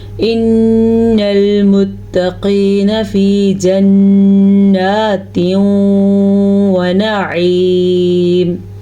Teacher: ہم نے غنہ ادا کیا ہے کیونکہ نون پہ شد ہے تو غنہ بنتا ہے.